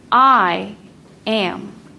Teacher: That first foot begins with a stressed syllable. I am. Am is much weaker when we say it out loud.